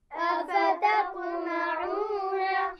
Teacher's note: أفتطمعون تا اور طا اکٹھے ہو گئے ہیں اور طا پر قلقلہ بھی ہے کیونکہ اس پر جزم ہے